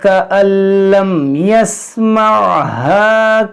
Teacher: یہاں پر نون ساکن کے بعد لام ہے, بغیر گننے والا ادغام کریں گے